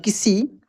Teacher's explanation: इस स का उच्चारण दांत से इसका ध्वनि निकलता है।